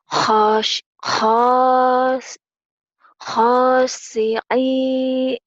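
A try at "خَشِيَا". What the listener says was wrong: Jangan putus.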